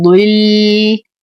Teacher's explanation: ننتبه كثيرا لحرف الضاد المفخم المستعلي المكسور فنعطيه أقل درجات التفخيم، نقول ضل. نصبر على اللام فهي لام قمرية.